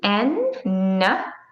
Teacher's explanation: the n sound you need to bring your tip of tongue to the bumpy part of your hard palate so the roof of your mouth that gum ridge bumpy part